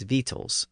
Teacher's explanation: the c or k sound in the middle was usually dropped